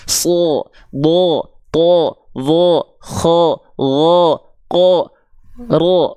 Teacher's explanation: semua huruf ketika berharokat fathah yang terdengar seperti vokal O, berarti dia termasuk ke dalam huruf yang tebal. So, bo, to, vo, kho, wo, ko, ro.